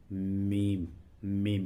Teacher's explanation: मीम का मखर दोनों होठों की खुश्की का हिस्सा है